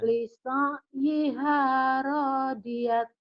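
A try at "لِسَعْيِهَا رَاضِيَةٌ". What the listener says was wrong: Lisaiha radiyah. Jangan rodiyat. Rodiyah. Lisaiha radiyah.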